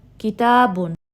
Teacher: this Alif Mad is coming right after the Fatha and it's making it 2 counts longer